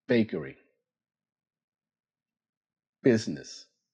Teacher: The B sound uses your voice.